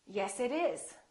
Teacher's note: we link this together and therefore the t is between two vowels so we don't say yes it is we say yes it